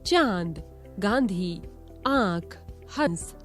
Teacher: इसका उच्चारण नाक और गले दोनों से होता है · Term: अनुनासिक चंद्र बिंदु